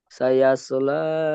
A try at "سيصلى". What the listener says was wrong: সাইয়াস না, সাইয়াস। একটু এটা মোটা, বেশ সবসময় মোটা করে হয় একটু, মুখটা একটু গোল করে।